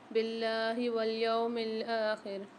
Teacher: اللہ کے لام کو باریک پڑھیں گے کیونکہ لام سے پہلے زیر آ رہی ہے اور کھینچ کے پڑھیں گے۔